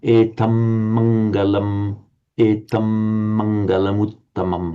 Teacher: You've got to pronounce a double M here because we've got this word ending in an M, and the next one beginning with an M.